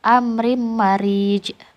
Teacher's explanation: Huruf jim dibaca sukun dan memantul. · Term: qalqalah